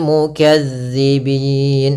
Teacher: huruf zal kecil, yaitu ujung lidah kita menempel dengan gigi seri atas